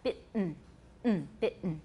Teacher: It's dentalized. In both British and American, the T in bitten is accompanied by a glottal stop.